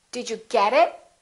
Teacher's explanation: i emphasized get but i didn't emphasize it because it is not a noun it is a pronoun